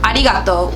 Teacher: text you can consider this as l when you pronounce it so pronounce the r with an l instead